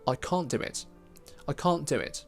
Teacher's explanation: So we simply drop the middle consonant, and in this case, it's the T.